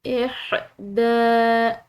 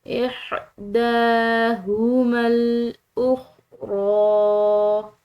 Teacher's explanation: کھڑی زبر کی وجہ سے اس کو ہم نے کھنچاؤ دیا ہے